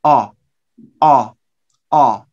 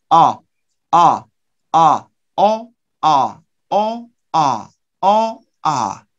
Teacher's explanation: in American English, we use central vowel, not so back. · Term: The American vowel